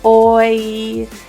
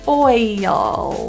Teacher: The word oil is difficult for most people because it actually has two vowels plus a slight diphthong in there.